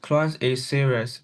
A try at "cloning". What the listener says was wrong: Cloning why you never read the ing cloning is serious.